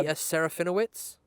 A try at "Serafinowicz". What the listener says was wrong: you forgot the C at the end, but yeah. Serafinowicz.